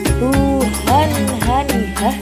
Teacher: huruf H keluar dari tenggorokan yang jauh